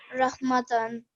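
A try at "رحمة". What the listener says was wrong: Now, when we are doing a waqf, this ta it changes to ha. So instead of rahmatan, it's rahmah.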